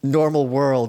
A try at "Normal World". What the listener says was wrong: oh he's putting the wrong emphasis on them yeah you said on the world instead of normal world